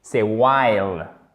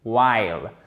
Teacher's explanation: on ne prononce pas le H dans le sens où il n'y a pas de H aspiré.